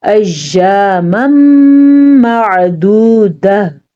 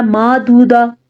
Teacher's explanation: آئین کے مخرج کو واضح کریں۔ اگر آپ نے اس کو واضح نہ کیا تو یہ حمزہ یا الف بن جائے گا